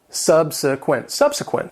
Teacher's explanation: It has three syllables and the stress is on the first syllable.